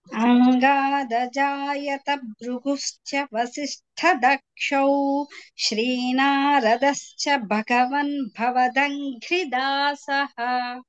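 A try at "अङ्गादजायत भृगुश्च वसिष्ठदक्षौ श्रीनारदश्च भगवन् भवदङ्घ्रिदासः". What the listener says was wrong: చాలా బాగుంది.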